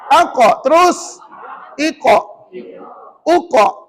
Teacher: Pangkal lidah tekan hampir ke anak tekak. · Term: qaf